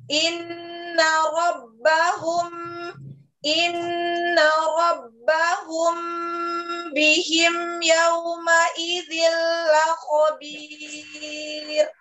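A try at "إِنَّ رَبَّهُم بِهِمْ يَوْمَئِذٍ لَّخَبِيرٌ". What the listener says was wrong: Baik, agak cepat antara huruf ke huruf. Inna rabbahum bihim yauma idil khabir. La khabir bawah.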